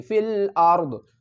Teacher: اب ضاد کی جو زیر ہے یہ ڈراپ ہو جائے گی